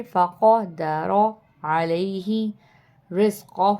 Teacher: وَأَمَّا إِذَا مَا ابْتَلَاهُ فقدر فقدر، یہاں پہ قوف ہے، قوف کی آواز نکالیں گے موٹی کر کے